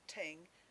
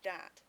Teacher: MLE displays a tendency, although not a strict one, of transforming the TH into a T or a D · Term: th stopping, TH stopping